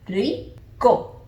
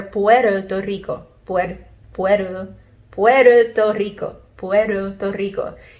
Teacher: the soft touch of the tip of the tongue to the roof of the mouth